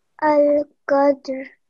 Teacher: The dal also is a qalqla letter, so you do a little bit of a bounce, which you did.